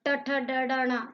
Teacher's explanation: ट वर्ग में ट ठ ड ढ ण मूर्धा से, मुख की छत यानी मूर्धा से टकराकर ये ध्वनि निकलती है